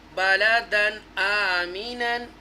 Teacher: یہاں پر دیکھیں تنوین آ رہا ہے بعد دو زبر بند، اس کے فوراً بعد حروف حلقیہ میں سے حمزہ آ رہا ہے، اس لیے ہم نے اس کو اظہار کرنا ہے